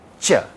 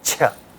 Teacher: With less aspiration it is cha, or no aspiration it is cha. With the aspiration it becomes cha